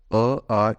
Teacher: का वर्गीकरण होता है उसमें जब हम स्वरों को बोलते तो जो होट होते हैं हमारे वो गोल नहीं होते हल्के से चपटे हो जाते हैं यानी कि फैल जाते हैं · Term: अव्रत मुखी